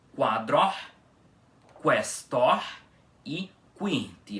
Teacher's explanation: Com o U pronunciado em todas essas três palavras